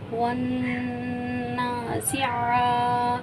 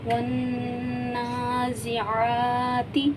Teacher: ون نا زا زیر زی، ون نا زی، عین کھڑا زبر ع، ون نا زی ع، تا زیر تی، ون نا زی عاتی، عین کو بھی ایک الف کی مقدار کھینچیں گے، کھڑا زبر ہے۔